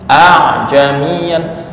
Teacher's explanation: makhraj ain itu di mana? Tengah tenggorokan.